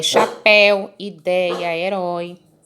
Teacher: Chapéu, quando eu falo aberto, eu falo no sentido de que o som sai pela boca, não sai pelo nariz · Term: som aberto